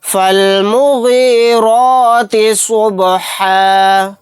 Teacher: فا کو لام ساکن کے ساتھ ملا دیں گے، یہ الف نہیں پڑھا جائے گا